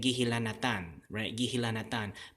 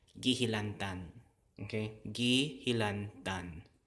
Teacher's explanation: That morphological process of deletion is taking this very last vowel and deleting it.